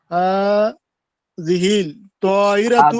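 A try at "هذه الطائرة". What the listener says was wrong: হাজিহিত, হাজিহিল হবে না, হাজিহিত।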